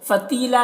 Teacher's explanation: فتیلا یہاں پر یا مدہ ہے، ایک الف کے برابر کھینچیں گے اور یہاں پر وقف کریں گے تو ایک زبر کے ساتھ الف پڑھا جائے گا